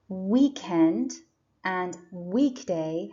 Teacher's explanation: weekend and weekday have the stress on the first syllable week